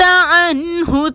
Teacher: نون ساکن کے بعد حروف حلقی میں سے ہا آ رہا ہے، نون کو ظاہر کر کے ادا کریں گے